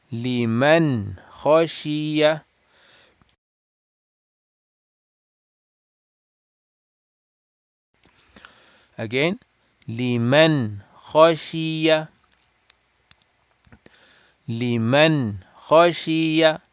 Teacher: So we are not extending the gunna at all. We are making it short and clear.